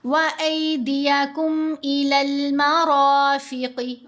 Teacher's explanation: रा के ऊपर ज़बर आई तो हमने रा को मोटा पढ़ना है, और रा के ऊपर ज़बर भी है, साथ अलिफ भी है।